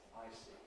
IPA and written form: ˈaɪsi (icy)